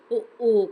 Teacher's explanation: இதழ்கள் குவிப்பதால் பிறக்கும் எழுத்துக்கள் உ